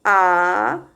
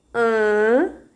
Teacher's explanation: a vogal A ela é oral e a vogal an ela é nasalizada